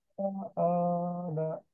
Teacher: Jangan ana Pak, tapi ana, a-nya panjang.